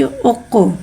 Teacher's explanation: कौफ उर्फ़ मुस्तालिया लिहाजा इसकी आवाज़ अलग से मोटी अदा होगी। कौफ के बाद साकिन है, साकिन को पहले वाले से मिला के पढ़ेंगे। · कौफ उर्फ़ कलकला है, लिहाजा इसमें आवाज़ लौटेगी।